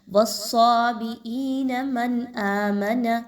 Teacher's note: والصابئین، حمزہ یا زین ای یا مدہ ہے، 1 سے 2 الف کے برابر پڑھیے۔ من آمن، نون ساکن کے بعد حمزہ کا حرف آ رہا ہے، یہاں پر اظہار کیا جائے گا، کسی طرح کا غنہ نہیں کرنا۔